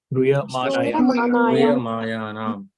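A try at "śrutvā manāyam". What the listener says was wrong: No, not mayanam, manayam. Shruya manayam.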